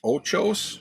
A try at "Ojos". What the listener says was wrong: There's no CH in the last word.